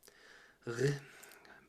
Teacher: That R is just trying to do the G sound, but squelching it in the back of your throat, kind of gargling it